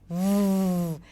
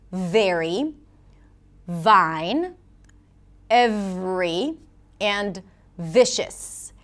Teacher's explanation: The V usually represented with a V sound is produced where the bottom lip touches the top teeth. There must be contact between the lip and the teeth v creating this friction sound.